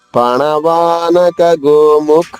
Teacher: ఖా మహాప్రాణము దీర్ఘము, విసర్గ ఉచ్చారణ హ హ్రస్వంగా.